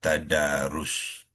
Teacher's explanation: Kita panjangkan 2 harakat. Tadarusun kita waqafkan dia jadilah tadarus. Waqaf dengan sukun mendatang kepada huruf sin yang hujungnya tadarus.